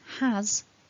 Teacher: has although it's written with an s actually ends with a z a voiced